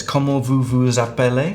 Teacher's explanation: we have to pronounce the s which kind of transform a little bit into a z. and leaz it link it to the second word. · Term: leazison